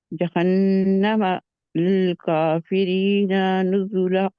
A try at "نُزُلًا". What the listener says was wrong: نون کو کھینچنا نہیں ہے، اسی لیے آپ کا لا چھوٹا ہو گیا آگے، کیونکہ اس جہاں پہ آپ کسر نکال کے کھینچنے کی. للکافرین نزلا،